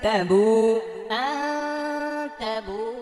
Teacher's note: এই যে বু এখানে এক আলিফ টান হবে